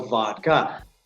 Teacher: Vodka, to me, sounds like three syllables, and in English, a general rule is vowels produce syllables, not consonants. So vod has one O, which is one vowel sound, the sound of ah. So that's one syllable, and ka is another sound, so vodka.